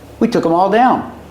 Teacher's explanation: them sometimes is pronounced um um with no th sound